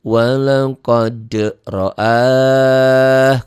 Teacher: Ini ada mad yang ketemu satu huruf hidup dihentikan. Jadi mad arid disukun jadi panjang.